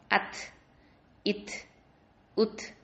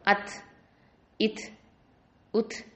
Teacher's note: அது வந்து ஒரு லைட்டாக ஒரு தெரிக்கிற மாதிரி ஒரு சவுண்டு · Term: விஸ்பரிங் சவுண்டு